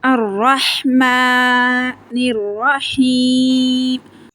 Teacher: ہا حروف حلقی ہے، حلق کے درمیان والے حصے سے پڑھا جائے گا